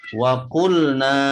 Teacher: na dibaca panjang 2 harokat, hukumnya mad tabi'i